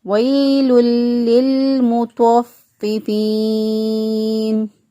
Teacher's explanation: ہے، نون وقف کی صورت میں ساکن ہو جائے گا، اور ساکن سے پہلے یا مدہ موجود ہے، تو میکسیمم 6 الف کے برابر اس کو لمبا کر کے پڑھ سکتے ہیں۔